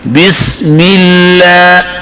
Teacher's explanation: لفظ اللہ سے پہلے اگر زیر آ جائے, لفظ اللہ کا علام پر پڑھیں گے کہ باریک؟ یہاں لفظ اللہ کا علام باریک پڑھیں گے